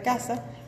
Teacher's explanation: En el fonema K, por ejemplo, de casa, el modo de articulación es oclusivo